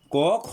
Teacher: অল্প প্রাণ অর্থাৎ উচ্চারণ করতে কম সময় লাগে, কোনটা মহাপ্রাণ উচ্চারণ করতে বেশি সময় লাগে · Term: অল্প প্রাণ মহাপ্রাণ